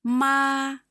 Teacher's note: First tone is flat.